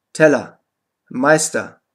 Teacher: die unbetonte Endung er wird a ausgesprochen